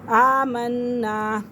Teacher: آمنا نون مشدد ہے تو اس لیے نون کو تھوڑا سختی کے ساتھ پڑھیں گے